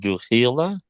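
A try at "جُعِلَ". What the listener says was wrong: Not khi. It's I.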